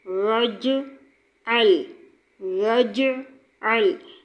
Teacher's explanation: جیم پر قلقلہ کرنا ہے، لام پر قلقلہ نہیں کرنا۔